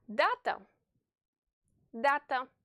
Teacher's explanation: the first a is stressed therefore you have to stretch its pronunciation say it louder and more clearly than the other a